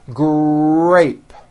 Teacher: the R sound is the strongest sound of the blend, and your lips often come forward before you even say the word. · the R sound is stronger and you even hear it more than the G sound. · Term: R blends